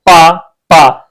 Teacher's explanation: आप देखेंगे कि दोनों जो आपके ओठ हैं, ये दोनों जब तक आपके मिलेंगे नहीं तब तक आप पा नहीं बोल सकते। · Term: ओष्ठ